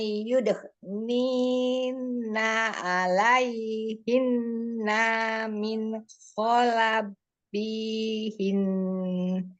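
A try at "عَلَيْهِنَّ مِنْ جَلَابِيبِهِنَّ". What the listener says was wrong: Tuh, nunnya dia gunahkan, tapi fathahnya kan pendek. Pendek ya. Alaihin min jalabibihin. Terus kemudian yang ada gunahnya ikhfa, nun sukun ketemu dengan jimnya ikhfa, samar. Tapi tetap disertai dengan gunnah, ditahan. Berarti gunnah itu artinya suaranya itu ditekan, ditahan, kemudian masukkan ke al-khaisum, rongga hidung ya. Ditahan sekitar 2 sampai 3 kroket.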